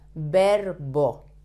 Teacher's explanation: V and B sound the same in Spanish, like a very soft B.